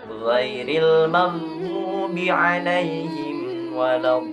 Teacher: pengucapannya pun huruf ghin ini dari tenggorokan bagian atas